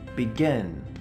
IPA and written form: bɪˈɡɪn (begin)